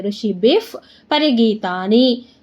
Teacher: ಋಷಿಭಿಫ್ ಬಿ ಆದ್ಮೇಲೆ ವಿಸರ್ಗ ಇದೆ, ವಿಸರ್ಗದ ಮುಂದೆ ಪ ಇದೆ, ಅದಕ್ಕೇನಾಗುತ್ತೆ ನಮಗೆ ಅರ್ಧ ಫ ಆಗುತ್ತೆ.